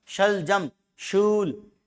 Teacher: ये शय का उच्चारण स्थान कौन सा? तालव्य।